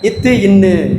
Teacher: மேல்வாய் பல்லின் அடிநாக்கின் நுனியை தொடுவது. மேல்நா மேல்வாய் பல்லின் அடி நாக்கின் நுனியை தொடுவது.